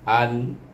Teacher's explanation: Kalau tak kita tak ingat hukumnya izhar ki, kita nampak sana ada tanda mati di atas nun, kita baca dengan matikan dengan hamzah, bunyinya an, tidak ada dengung, tidak ada panjang